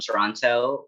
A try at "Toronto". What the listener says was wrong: But you pronounce you just pronounced the T in Toronto.